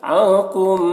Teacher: نون میں اخفا ہوگا کیونکہ نون ساکن کے بعد حروف اخفا میں سے کاف ہے تو یہاں پر نون میں اخفا کریں گے۔